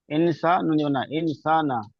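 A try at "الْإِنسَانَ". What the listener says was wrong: আলিফটা কেন বাদ দিচ্ছেন আলিফা আলিফ জবন আলিফ সাব না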